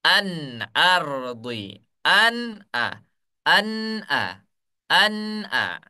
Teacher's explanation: apabila ada nun sukun bertemu dengan hamzah, maka bacanya harus jelas. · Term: izhar